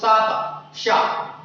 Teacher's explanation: कि जब आप उच्चारण करते हो सा का शा, तो सा का ऐसे लगता है जैसे रगड़ खा रहा हो या फिर संघर्ष हो रहा है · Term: संघर्षी व्यंजन